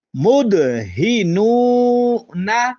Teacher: مدہنون میں دال پر قلقلہ کریں گے، نون پیشوا نو کا تعلق حروف مدہ سے ہے، اس کو لمبا کریں گے